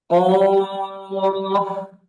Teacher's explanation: এটা আমাদেরকে মনে রাখতে হবে, যে মুখ খোলা যাবে না। আর কফটা উচ্চারণ হবে জিহ্বার গোড়া থেকে, আর উচ্চারণটা হবে মোটা